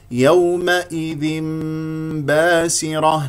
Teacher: ونكسر الهمزه جيدا والذال هنا تنوين جاء بعد التنوين باء و الباء هو حرف الاقلاب اذا تقلب الى ميم بغنه بمقدار حركتين